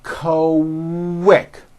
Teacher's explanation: Q sounds are made with the K sound, k, k, and the W sound, w, put together.